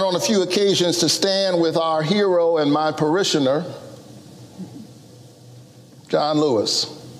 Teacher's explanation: listen to how he pauses for effect before he pronounces the name